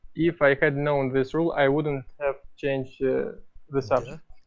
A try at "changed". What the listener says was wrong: Changed the subject. Yeah, you want to really pronounce that d there, So it's clear.